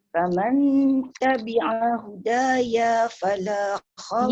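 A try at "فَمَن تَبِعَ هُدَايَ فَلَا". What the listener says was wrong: Ya tak boleh panjang Bunda. Ya tu tak ada alif. Faman tabi'a hudaya fala. Ya fala.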